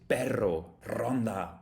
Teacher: Spanish has this particular R sound, the rolling R